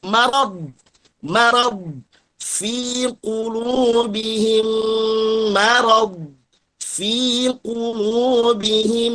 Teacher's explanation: marad tipis ma-nya. Jangan sampai tebal, jangan morod